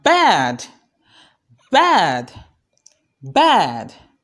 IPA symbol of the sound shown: æ